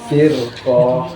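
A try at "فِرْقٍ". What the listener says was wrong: Sedikit lagi. Firqoh. Nggak panjang pokoknya. Firqoh.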